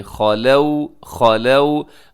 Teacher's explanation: خا موٹا ہے، اس کے بعد واو لین ہے، واو ساکن سے پہلے زبر، واو لین۔